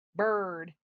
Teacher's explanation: you don't hear the e or i sound at all just er hard r